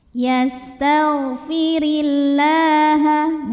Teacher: karena ada baris fathah tegak di atas huruf lam cara membacanya dipanjangkan lamnya ini dua harakat